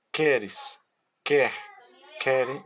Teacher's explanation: são os verbos que apresentam a sílaba tônica no Radical do verbo ou seja eles tem mais força quando você pronuncia no verbo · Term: verbos rizotônicas